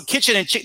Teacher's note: kitchen and chicken they're both two syllable words they're both stressed on the first syllable